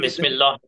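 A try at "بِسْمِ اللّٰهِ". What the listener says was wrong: बिस्मिल्लाह बोले तो लाम पुर हो जाता। बिस्मिल्लाह में मीम को चूंकि जेर है, तो लाम जलाला बारीक का कायदा होगा वहां पे।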